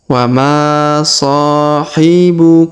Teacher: Huruf ma dipanjangkan 2 harokat, huruf so dipanjangkan 2 harokat karena masing-masing keduanya memiliki alif di depannya.